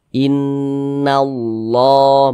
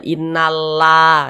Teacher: lam jalalahnya ini dibaca tebal dibaca tafkhim Dibaca innallah begitu Jangan dibaca innalla jangan tapi ditebalkan innallah yang